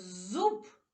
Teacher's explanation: А у слові зуб перший звук з дзвінкий